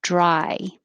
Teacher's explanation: the vowel in dry is I. So you need to start low and move your tongue high